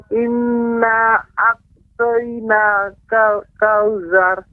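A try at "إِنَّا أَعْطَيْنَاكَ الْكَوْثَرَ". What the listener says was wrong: Di sini pengucapan ain itu lebih harus lembut lagi. A'tayna, kemudian kautsar tadi terdengar seperti za, kautsar. Kautsar. Kautsar.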